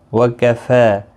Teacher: واللہ اعلم بأعدائکم وکفی باللہ ولیا۔ وکفی، فا کے اوپر کھڑی زبر ہے، ایک الف کی مقدار کے برابر کھینچ کر پڑھیں گے